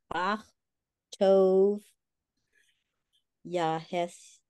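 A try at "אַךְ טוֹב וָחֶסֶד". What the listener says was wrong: Vav, it's a Vav. It's got, it's a full letter.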